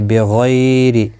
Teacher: غی یالین ہے، تھوڑا نرمی کے ساتھ کھینچ کر ادا کریں گے، غین مستعلیہ بھی ہے، پر پڑھا جائے گا، اور زیر کی وجہ سے باریک پڑھا جائے گا.